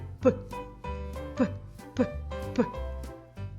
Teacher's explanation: горло мовчить звук п глухий